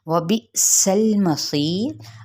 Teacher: वाव होंठों की ना तमाम गुलाई के साथ